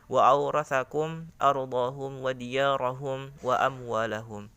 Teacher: ada huruf mim yang berharakat sukun bertemu dengan huruf alif, maka dibaca idhar atau jelas, jangan dibaca idgham ataupun dibaca dengan ikhfa samar. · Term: idhar syafawi